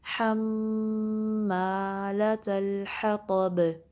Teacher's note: حما، لام پہ فتحہ ہے، پھر تا مربوطہ ہے، یہ گول تا، اس کو لام ساکن سے ملائیں گے، اور آگے ہا پہ فتحہ ہے، طا کو ہیوی پڑھیں گے، اس پہ بھی فتحہ ہے، اور با پہ کلکلا ہوگا۔